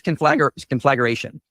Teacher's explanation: He was adding a schwa and putting the emphasis on the wrong syllable.